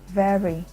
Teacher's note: The V sound is called voiced labiodental fricative, for example, in the word very.